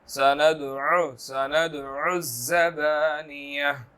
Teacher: اب یہاں پر سند دال کلکلہ حروفوں میں سے ہے، عین جو ہے وہ حروف حلقی میں سے ہے، تو اس کو حلق سے ادا کرنا ہے واضح طور پر